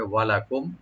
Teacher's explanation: ওয়ালাকুম, ওয়া ওপেন রাখবেন, লাম ওপেন, কুম এখানে মিম সাকিন, এখানে জাহার করবেন, এখানে গুণনা হবে না, স্পষ্ট করে পড়তে হবে